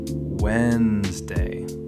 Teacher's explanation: That first D just disappears. It's like the word is playing a trick on you.